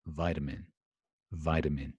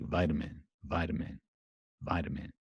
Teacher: the T in the American pronunciation is going to be kind of softened